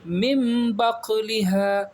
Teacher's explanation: اقلاب ہو رہا ہے، نون ساکن کے بعد با آ گیا تو میم میں بدل دیں گے